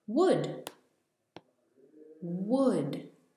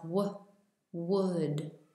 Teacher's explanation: Your lips come out, it's in the front of your mouth. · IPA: wʊd